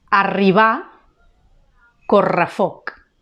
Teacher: la doble R, que és una R vibrant i que va entre vocals normalment